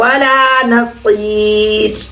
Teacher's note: یہاں جو وقف کرنا ہے را کو باریک کرنا ہے